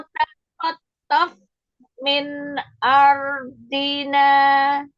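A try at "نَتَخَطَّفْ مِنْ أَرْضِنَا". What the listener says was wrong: Fa-nya nggak bisa ya? Tof, keluar udara. Tof.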